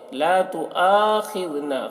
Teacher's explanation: خا کو پر پڑھیں گے، خا حرف مستعلیہ میں سے ہے